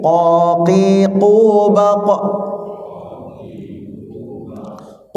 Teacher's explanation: cara membacanya adalah dia tebal ya tebal tidak mengeluarkan Hawa dan dia Qalqalah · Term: huruf q, qaf